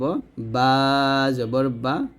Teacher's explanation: বা আমরা দুই ঠোঁট মিল করে উচ্চারণ করব